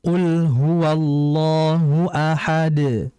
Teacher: Nah, untuk qul huwallahu ahad dal qalqalah di situ, maka ini disebut dengan qalqalah kubra atau qalqalah besar. Qalqalah yang sangat jelas pantulannya dibandingkan yang qalqalah sughra.